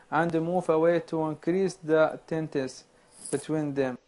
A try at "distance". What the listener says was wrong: Again, the word is distance. You're not pronouncing that S in this word.